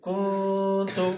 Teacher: د نون اواز به مونږ پوزه کې پټو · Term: اخفا